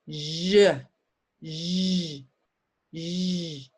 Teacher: Use my voice. Same mouth as sh, but I use my voice.